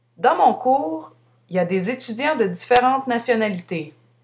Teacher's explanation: à l'oral, de manière familière, on prononce ya au lieu de il y a. On supprime le il.